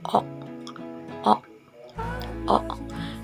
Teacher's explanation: Bibir membulat, lidah sedikit naik ke belakang.